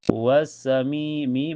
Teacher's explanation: karena ada ya sukun sebelumnya harokat ke kasrah di mi dibaca panjang 2 harokat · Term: matobi